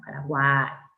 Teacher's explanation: En Paraguay, ya te dije que la Y al final de sílaba cuenta como una I, por lo tanto es un triptongo. Paraguay, cerrada U, abierta A, cerrada I, con acento en la A